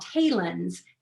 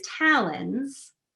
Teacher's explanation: you'll get either a long or short vowel variant in that uh initial um syllable so you know it's a very plausible pronunciation of that word